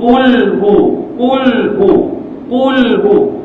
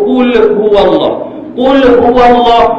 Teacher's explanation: macam mana bunyi dia Qulhu dia akan bunyi Qulhu Qulhu Qulhu lam tu biar mati betul-betul jangan diqalqalahkan dia pula dia akan keluar jadi Qulhu ada belakang dia tu